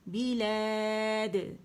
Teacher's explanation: دال کے مخرج پہ جائیں گے اور وہاں ہم نے قلقلہ کرنا ہے